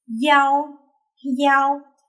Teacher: Since the initial here is a labial sound that is made by our lips, if I do this, biao, I can almost remove the sound, biao, versus yao, yao. The Y sound has more friction than the letter I, right?